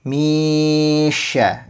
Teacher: Jadi huruf syin itu sifat khususnya adalah tafasyi yang mana saat disebutkan akan menyebar suaranya gitu. S makhrajnya juga ada berada di tengah lidah ya. Jadi kalau huruf sin di depan, kalau syin di tengah